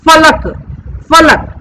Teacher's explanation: इसमें ऊपर के दांत और नीचे के होठ मिलेंगे तब इस फ का उच्चारण होगा